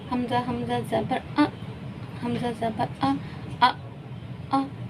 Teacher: حمزہ کے مخرج میں آواز روکنی ہے